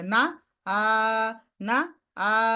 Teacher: নাকে যেন মাদ না চলে যায়, মাদ জাউফ থেকে আসবে